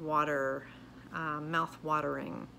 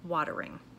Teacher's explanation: Okay, so that could be a regional pronunciation there, but very common in the Midwest to have that T sounding like a D sound